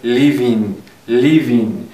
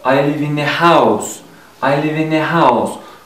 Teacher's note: агар мо инро пайваст кунем, live бо ин пайваст мешавад ва ин бо a пайваст мешавад. хоб, азбас ки ҳарфи и дар ин ҷо фаъол нест, хонда намешавад, мо ҳарфи v-ро бо ин пайваст мекунем